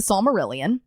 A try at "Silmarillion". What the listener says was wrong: It's the Silmarillion. You said Silmarillion like it's the Psalms of... Silm. Silmarillion. There's no Psalms in it.